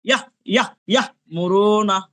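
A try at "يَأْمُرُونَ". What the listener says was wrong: ইয়াহ, হা হয়ে যাচ্ছে ইয়া। উচ্চারণ করেন, শুধু সিম্পল ইয়া উচ্চারণ করেন না, আপনার হা উচ্চারণ করতে হবে না, দেখেন হয়ে যাচ্ছে।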